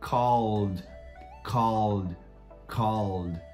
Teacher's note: Esse som de L vibra a garganta também. Então fica called.